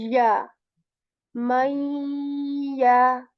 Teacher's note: Ya letter, middle portion of the tongue is raised